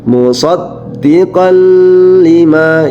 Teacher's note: baca tanwinnya dimasukkan ke huruf idgam bilagunah